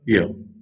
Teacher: च में टच है, ज में कम टच है, और कम टच करो य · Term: अंतस्थ